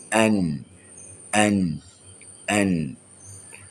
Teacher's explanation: Dia sama je, konsep yang sama. Pertemuan hujung lidah dengan lelangit dalam keadaan yang ringan. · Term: tawassut